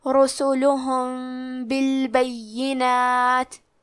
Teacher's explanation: بالبینات میں یا پہ تشدید ہے تو ہم 2 حرف کے برابر یا کو پڑھیں گے